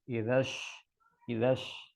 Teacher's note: Jadi yang perlu perlu konsisten shin ya, shin kecil sama shin besar itu. Jadi kalau shin besar itu kan dia dari tengah lidah ya. Jadi lidah kita mengangkat ke atas. Idash disertai dengan menyebarnya udara di rongga mulut.